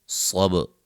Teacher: صاد کو موٹا، با پہ قلقلہ، را کو موٹا ادا کریں گے